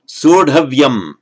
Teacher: the full consonant H that's part of the root, followed by a T, regularly merges to a D. So it would normally be sardhavyam, but by a slight irregularity, this A becomes an O.